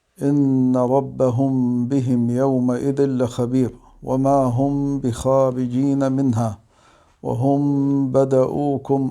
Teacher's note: الحكم الأول هو الإخفاء الشفوي، تخفى الميم الساكنة عند حرف الباء مع مراعاة الغنة